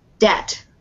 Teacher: with this word, we do not pronounce the B. The B is silent in this word. Debt. So we just say debt.